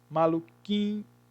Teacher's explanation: Então você tem ma, lu, qui, o K com I, e esse I com um N, ele sofre uma nasalização